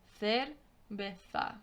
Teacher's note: The cerveza has the th sound for the C-E at the beginning, and it has the th sound at the end for the Z.